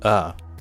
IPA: ə